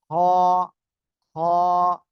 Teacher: গলার শেষ ভাগ থেকে এই অক্ষটা উচ্চারণ হবে